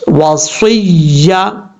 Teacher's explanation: زا، سین، صاد، ان 3 حروف میں ان کو پڑھتے ہوئے سیٹی کی آواز آئے گی. صاد حروف مستعلیہ میں سے بھی ہے، پر بھی پڑھا جائے گا فل ماؤتھ، اور یعنی ہیوی ساؤنڈ جس کو کہتے ہیں، ہیوی ساؤنڈ بھی پڑھا جائے گا اور سیٹی کے ساتھ پڑھا جائے گا.